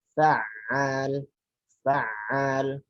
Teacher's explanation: Ainnya jangan sampai yang pertama masuk ain, yang kedua malah keluar hamzah.